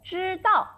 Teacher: First tone, 知 and the fourth tone, 道.